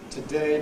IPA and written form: təˈdeɪ (today)